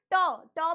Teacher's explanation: ट में जीव उल्टी होकर तालू को स्पर्श कर रही है इसलिए बेटा इनका उच्चारण स्थान क्या हो जाता है मूर्धा या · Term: मूर्धन्य